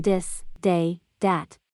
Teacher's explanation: The TH sound, when occurring in the beginning of a word, the TH sound is pronounced as a D sound. This, they, that become dis, day, dat.